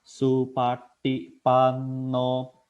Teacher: ti-nya itu lidahnya ditekuk ke atas, tapi pan-nya itu balik lagi. Supati pan-nya itu n-nya sudah lidahnya sudah di depan gigi.